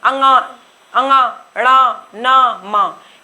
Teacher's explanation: नासिका में आपको बता चुकी, पांचों वर्ग का अंतिम वर्ण अंगा, अंगा, णा, न, म, ये आपका नासिका से उच्चारण होता है, इसलिए इनको नासिका व्यंजन बोला जाता है